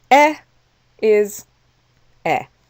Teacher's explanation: Okay, this is the word for and in French, et. So even though the word et is followed by a word that begins with a vowel, we still don't pronounce the T.